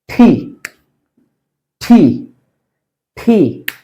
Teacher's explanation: ঠি মানে জিহ্বাটা ঠিক উপরের দাঁতের পিছনে নিয়ে একটু ধাক্কা দিয়ে বলতে হবে